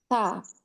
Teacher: Ta itu ujung lidah bertemu dengan gusi. Tempat tumbuh gigi atas. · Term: huruf ta